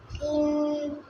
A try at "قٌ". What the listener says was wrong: کاف کو کیا ہے دیکھ کر پڑھیں دو زیر ہے ہاں دو پیش ہے تو دو پیش کی تنوین پڑھیں نا آپ دو زیر کی تنوین پڑھ رہے ہیں پڑھیں کون ہا کی پڑھیں رواں